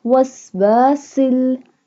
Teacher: seen pronounced like a whistle sound